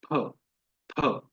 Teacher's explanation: फ, तो फ गलत उच्चारण है। इसका सही उच्चारण है फ, फ, जिसमें दोनों होठ मिल रहे हैं।